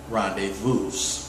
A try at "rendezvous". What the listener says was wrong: It's not rendezvous. It's not rendezvous. The S is silent.